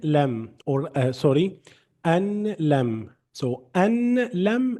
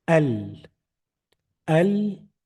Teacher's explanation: So just cancel or delete the noon and read everything else. So from the hamza with fatha, the vowel, go directly to the letter lam.